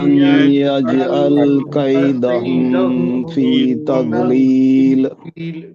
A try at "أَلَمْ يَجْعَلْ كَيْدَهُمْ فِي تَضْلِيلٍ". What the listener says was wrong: یہاں پہ کیدہم میں جو غنہ ہو رہا ہے یہ بالکل بھی غلط ہے. ابھی میں نے آپ کو بتایا بھی کہ اظہار ہوگا. کیدہم اظہار کا مطلب جلدی پڑھنا ہے. ألم يجعل كيدهم في تضليل.